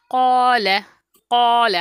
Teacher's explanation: क़ौ को 2 काउंट तक करेंगे और ला पर हरकत है तो इसको हम 1 काउंट करेंगे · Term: अलिफ मद्दा